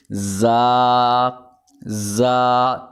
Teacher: زبان کی نوک اور دونوں دانتوں کے اندرونی کنارے سے یہ ادا ہوتا ہے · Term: حروف صفیریہ